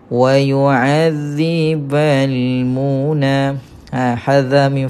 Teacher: Alif tak berbaris maka baca panjang dua harakat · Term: mad asli